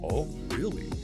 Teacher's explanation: Upward inflection really shows surprise or interest. Downward inflection, oh really, often shows mild surprise, perhaps skepticism